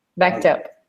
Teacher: you can make like a T sound instead of ed